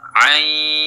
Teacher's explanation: Setelah i-nya panjang 3 alif baru didengungkan. Karena ain ini bertemu dengan sin.